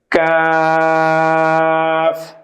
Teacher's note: জিহ্বার গোড়া থেকে একটু আগে বাড়িয়ে উপরের তালুর সঙ্গে লাগিয়ে উচ্চারিত হয় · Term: পাঁচ নাম্বার মাখরাজ